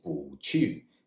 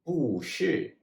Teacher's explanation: the character bu is normally a 4th tone. However, the exception is when it precedes another 4th tone, then it turns into a 2nd tone.